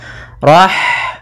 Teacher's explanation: kemudian Rahmani pada lafaz Rahmani ada H sukun maka di sini H mempunyai sifat yaitu sifat Hames maka alirkan nafas kita